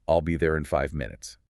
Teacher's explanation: And the stress and rhythm might not be what you expect if you just read the words individually on a page. A native speaker might say it quickly, perhaps blending in five together, maybe giving the word five, a slight stress, and an elongated vowel sound.